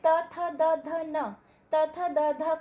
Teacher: त थ द ध को जब हम बोलते हैं तो हमारा जीभ दांतों से छुआता है, तो ये कहलाता है दंत्य।